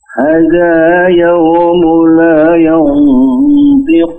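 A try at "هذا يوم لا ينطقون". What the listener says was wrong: Sekali lagi, hadza, dua harakat hanya.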